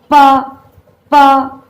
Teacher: अब देखिए होठ को छू के निकल रही है हवा